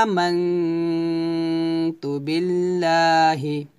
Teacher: লা বলতে হবে লা পাতলা করে